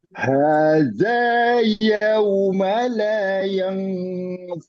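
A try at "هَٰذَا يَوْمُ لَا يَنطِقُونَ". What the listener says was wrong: Tapi jangan yauma. Yaum. Nah, yaum.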